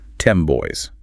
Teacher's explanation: the M sound is made with the lips and the very next sound is B in boys, which is also made with the lips. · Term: assimilation